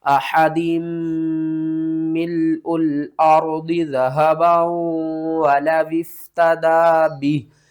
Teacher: यहाँ पर इस मीम को आपने छोड़ देना है, हा को दूसरी मीम के साथ मिलाना है, और ये मीम मुशद्दद है तो इसके ऊपर आपने गुन्ना करके पढ़ना है।